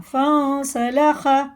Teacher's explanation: یہ اخفا کر کے پڑھیں گے، نون کو ناک میں لے جا کر 1 الف کے برابر کھینچ کے پڑھنا ، فَانْسَلَخَ، سین جو ہے ظاہر کر کے پڑھنا ہوتا ہے،